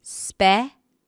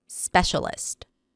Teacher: Stresses on the first syllable.